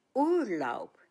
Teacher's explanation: Take note the B at the end of the word is pronounced as P. And the stress on this two-syllable word is on the first syllable, Ur, the Urlaub.